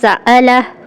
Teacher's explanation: حمزہ سیدھی آواز نہیں ہے، یعنی بالکل اسٹریٹ فارورڈ ادا نہیں ہوتا، یہ تھوڑی سی آواز کو توڑتا ہے، بالکل ہلکا سا آواز کو توڑتا ہے، یہ آواز کا بریک ہے۔